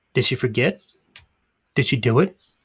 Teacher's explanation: did she sounds like dishy no D sound here so does she do it does she do it did she